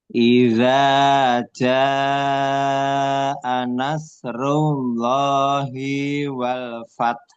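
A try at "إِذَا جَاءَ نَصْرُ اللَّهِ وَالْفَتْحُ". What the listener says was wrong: Cuman haknya kurang jelas tadi. Taknya sudah bagus.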